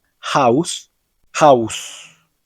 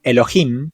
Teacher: generalmente se pronuncia como una H aspirada, haciendo un sonido parecido al de una J, pero muy suave. Su pronunciación es similar a la de la letra H en inglés, como por ejemplo en la palabra house, cuya H se aspira suavemente, en lugar de sonar propiamente como una J.